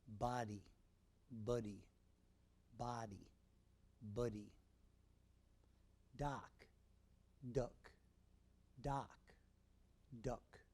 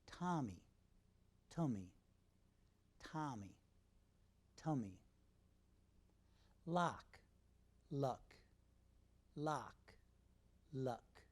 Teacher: both sounds are made with the tongue in the center of the mouth, ah, ah, The difference is that ah is said with a wide open mouth, not, and is made with a medium open mouth, nut. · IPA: /a/ vs. /ʌ/